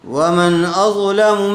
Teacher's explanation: نون ساکن کے بعد کیا آیا ہوا ہے حروف حلقی میں سے حمزہ آیا ہوا ہے اس لئے بلا غنہ کے جلد پڑھیں گے اظہار کر کے